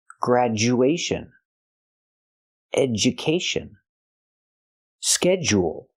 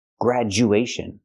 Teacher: graduation education schedule with all these words the DU makes the J sound again grad graduation we don't say gradu graduation and we don't